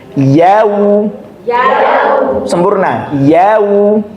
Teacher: maka sukunnya wawu dia seperti dhammah, mencucu.